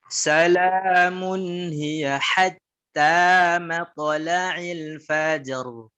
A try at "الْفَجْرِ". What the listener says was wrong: الفجر لا تأتي بألف، الفجر مباشرة.